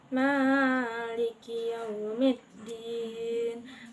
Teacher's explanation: ada huruf kaf yang makhrajnya di pangkal lidah bagian atas bertemu dengan langit-langit mulut yang lunak